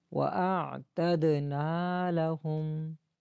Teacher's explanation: لام اور ہو کو دونوں کو نہیں کھینچنا